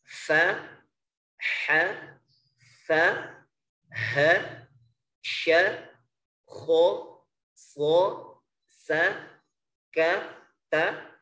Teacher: Karena hamas itu lawannya jahr. Jadi untuk huruf yang 10 ini, fa, ha, fa, ha, sya, kho, so, sa, ka, ta, ini semuanya menghembuskan nafas. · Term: hams